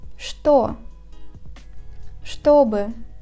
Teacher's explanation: In the word что and its variations, The first two letters Ч, Т are read as ШТ.